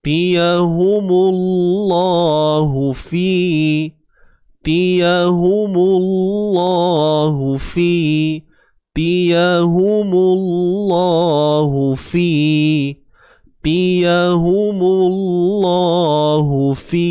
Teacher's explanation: Tiyahu ni semua satu harakat. Mullah ni kalimah Allah. Kita kena tebalkan. Sebelumnya ada huruf yang berbaris depan.